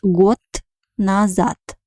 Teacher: Letter D is a voiced consonant in Russian language, but at the end of the word it becomes voiceless, so we pronounce it like T, because it has a weak position.